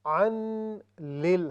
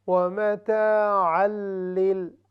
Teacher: چونکہ تنوین ہے، اس کے بعد لام ہے ادغام، لیکن اس کا نام ہے ادغام بلا غنہ، یعنی وہ غنہ، وہ ادغام جس میں غنہ نہیں ہوگا، یعنی ناک کی آواز بالکل نہیں آئے گی